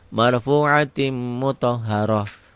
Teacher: tak marbutoh aja, bunyi taknya jadi ha